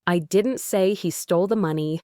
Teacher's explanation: the emphasis on say suggests that perhaps I implied it or hinted at it